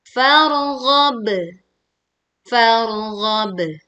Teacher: Rabbika far, tebalkan ro sukun saat kita membacanya karena didahului fathah · Pantulkan ba sukun saat kita berwakof di lafaz farghab dengan suara pantulan yang lebih kuat